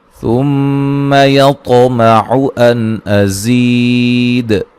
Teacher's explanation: میم مشدد پہ غنہ ضروری ہے، طا کو موٹا ادا کریں گے، قلقلہ کریں گے